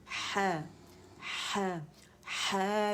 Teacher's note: مد اصلی ہے تو اسے کھینچیں گے 2 کاؤنٹ کے لیے